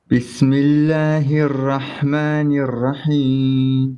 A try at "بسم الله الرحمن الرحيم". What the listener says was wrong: So you're saying Bismillahir Rahmanir Rahim. There's like, I think 6 beats there. There should be no more than, I would say, 2 to 3, maybe 4 max.